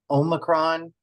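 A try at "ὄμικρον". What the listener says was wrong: Now the Omicron, I think you said Omicron. I normally put it with a short O, Omicron. Obviously, there are different pronunciations throughout the world and accents and such.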